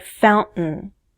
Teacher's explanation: American English speakers may use a glottal stop in a word like fountain.